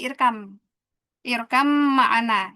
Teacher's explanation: ba mim berdekatan ya. Makrajnya sama-sama dua bibir ee mingkem. Tapi bedanya kalau mim ada makhrajnya diguna.